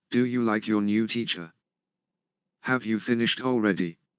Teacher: Rising intonation. The pitch of the voice rises at the end of a sentence. Rising intonation invites the speaker to continue talking.